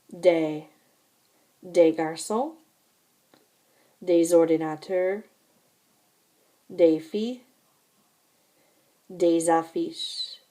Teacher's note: when they're followed by a word that starts with a vowel, you're going to hear that S as a Z sound. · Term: liaison